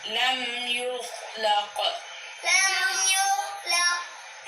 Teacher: کو ہلائیں گے نہیں، یہاں پہ قاف پہ کلکلہ کریں گے، خا پہ نہیں